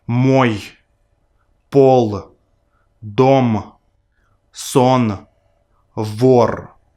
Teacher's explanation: these sounds are always pronounced in word final positions because they have no voiceless pairs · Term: non-paired consonants